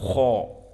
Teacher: Maka kha di saat kita menyebutkannya mulut kita penuh dengan udara kha. Dan lam menuju kepada al-hanak al-a'la kha. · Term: huruf al-mufakhamah